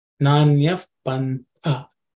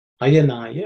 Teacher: This tha is the second letter in the third varga, so it has to be aspirated.